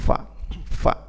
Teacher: Betul, Ustaz. Ya, fa itu ya kita tempelkan gigi seri atas kita dengan bibir bagian bawah